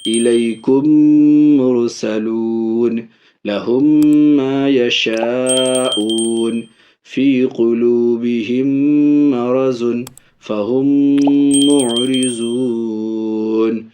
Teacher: ادغام شفوی یعنی میم ساکن کو میم کے ساتھ ملا کر کے غنہ کے ساتھ